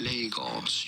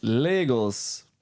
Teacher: You do want to stress on the first syllable